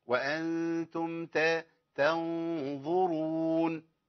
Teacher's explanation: أيوة لأن ما بقتش النون خلاص كده، أنا بخفي النون يبقى الغنة هنا تفخم تبعا للحرف الذي إيه بعدها، يبقى الغنة تتبع ما بعدها والألف يتبع ما قبله. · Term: فخمت الغنة